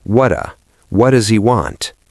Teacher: what does gets the flap T